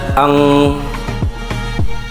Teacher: nun sukun atau tanwinnya dibaca samar sehingga Bukan dibaca n akan tetapi dibaca Ang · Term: ikhfa